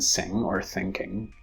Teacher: Ng as in sing or thinking, produced with the velar closure, meaning the back of the tongue presses up against the velum